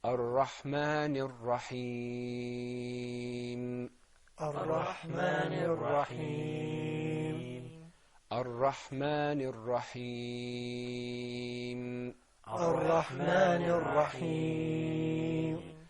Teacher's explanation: we elongated the ya in Rahim because there was that temporary sukoon.